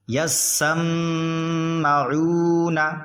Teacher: عین واو پیش عو، ایک الف پر کھینچیں گے کیونکہ حرف مد واو آ گیا. یسمعو نون زبرنا یسمعون.